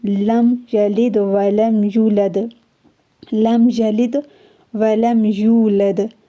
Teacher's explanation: یہاں پہ میم ساکن کے بعد یا ہے تو یہاں پہ اخفا غنّہ کچھ بھی نہیں ہوگا بلکہ اظہار ہوگا، جیسے الفاظ لکھا ہوا ہے سیم ٹو سیم ویسے پڑھا جائے گا۔ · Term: اظہار شفوی